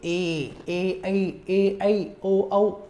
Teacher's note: आपने देखा ए आ को बोलते समय केवल एक था, ई को बोलते समय केवल एक था, ऊ को बोलते समय केवल एक था, री को बोलते समय एक था, लेकिन ए आई को जब आपने बोला तो ए आई ओ औ, यानी इन चारों के उच्चारण के दौरान जिह्वा एक साथ दो उच्चारण स्थानों सक्रिय रहती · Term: संयुक्त स्वर